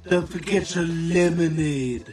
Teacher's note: when we have a t followed by a y sound that it becomes a CH sound